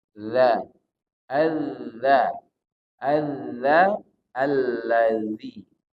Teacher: kalau dalal ini ujung lidah bertemu dengan ujung gigi seri atas gigit sedikit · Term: zal